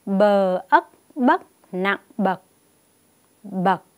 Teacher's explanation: Cô giới thiệu với các con vần mới thứ hai, đó là vần Ấc, có trong từ ruộng bậc thang. Tiếng Bậc có âm đầu bờ, vần Ấc và thanh nặng.